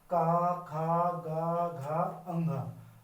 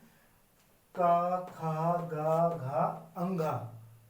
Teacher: आवाज सीधा गले से आ रही है अंदर से आ रही है तो इसलिए इनको बोलते हैं कंठ